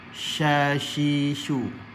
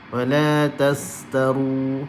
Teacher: Jadi makhrajnya di tengah lidah. Maka bila kita sebut sahaja huruf shin, automatik akan ada sifat at-tafashi ni.